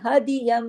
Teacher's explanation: دو زبر دو زیر دو پیش، تو یہاں دیکھیے دو زبر کی تنوین ہے، تو اگر نون ساکن یا تنوین کے فوراً بعد اگلا حرف با آ جائے تو اقلاب کا قاعدہ لگ جاتا ہے، یعنی تبدیلی ہو جاتی ہے کس بات کی؟ نون کی آواز میم میں بدل جاتی ہے · ین کے نون کے بجائے ہماری آواز میم کی نکلی کیونکہ یہاں اقلاب کا قاعدہ لگ گیا، اس وجہ سے کہ نون ساکن یا تنوین کے بعد، تنوین کیا ہوتی ہے؟